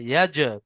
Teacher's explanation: এই জিমের উপরে সাকিন এসছে হরফে কলকলার মধ্যে, তাই জিমকে আগের অক্ষরের সাথে মিলিয়ে ধাক্কা মেরে আলাদা করে কলকলা করে পড়তে হবে